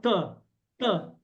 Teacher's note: you come to dental t t your tongue will hit your hit the back of your teeth say t t you see your tongue is hitting the back